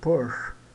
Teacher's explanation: Seria um e bem prolongado, um som de como o EU francês da palavra fleur